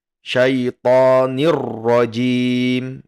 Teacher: idgham bila gunnah yang tidak didengungkan. Jadi membacanya langsung syaitonir rajim ya.